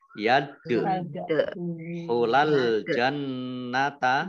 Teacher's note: dal sukun bacaan qalqalah dibaca memantul